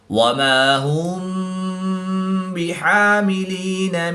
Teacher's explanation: میم ساکن کے بعد حرف با ہے تو یہاں پر اخفاء شفوی ہوگا، یہاں پر غنہ زمانی کر کے پڑھیں گے